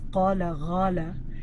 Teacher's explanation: they might flip the qa into a gha. So instead of qala, ghala, and that's Sudani accent, and where it's flipping the qa into a gha.